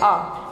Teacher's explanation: जब मैंने आ बोला तो मेरा पूरा मुख खुल गया है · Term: विवृत